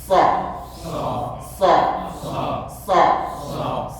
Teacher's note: SH keluarnya dari tepi kanan SH SH begitu ternyata keliru karena huruf SH keluar daripada di bawah lidah desisnya